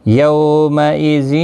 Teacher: یو واولین ہے، تھوڑا نرمی کے ساتھ آدھے الف کی مقدار کے برابر کھینچ کر پڑھیں